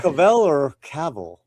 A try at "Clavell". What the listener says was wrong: Clavell. With an L. Clavel. It's Jimmy Clavel.